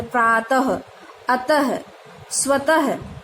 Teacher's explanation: ये जो आपके विसर्ग के चिन्ह हैं, इसको आधे ह के समान पढ़ा जाता है